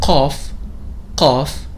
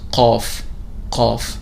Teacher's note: one of these those emphatic sounds that corresponds to the k sound but with more emphasis